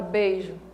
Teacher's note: Eu tenho E, esse fonema E, e tenho esse fonema I. Esse fonema I, ele é tão fraquinho, que ele mal é pronunciado. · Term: semivogal